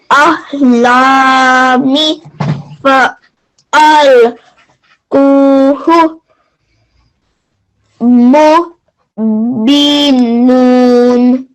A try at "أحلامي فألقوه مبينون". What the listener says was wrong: وہ آپ نے تھوڑا سا زیادہ لمبا کر دیا اور بیچ میں گیپ نہیں دیں، اس کو فلو میں پڑھیں.